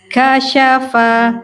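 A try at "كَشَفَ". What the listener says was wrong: Bukan fa, kasyafa. Nah, fa-nya tadi agak tebal.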